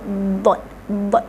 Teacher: makhraj huruf dot itu adalah tepi lidah tolak ke geraham